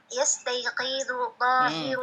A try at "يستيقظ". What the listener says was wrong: pendek. Qafnya pendek. Yastaiqidu.